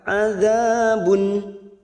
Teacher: Adza fathah bertemu alif 2 harokat. Adzabun. Dhamma tanwin bertemu ain namanya idhar halki.